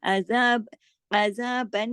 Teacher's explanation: सुबहानका फकीना अज़ाबन नार, ये जो बन नून पे देखें तशदीद है, अज़ाब अज़ाबन, ये जो नून की गुन्ने की आवाज है नाक में, ये ज्यादा देर छुपेगी क्योंकि नून पे तशदीद है